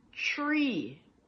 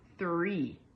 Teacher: in Jamaican Patois, for the TH sound, sometimes we'll switch it out for a D or a T. So, when we use a T, we'll say tree instead of 3.